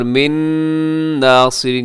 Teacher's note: نون ساکن کے ادغام ہوگا غنّے کے ساتھ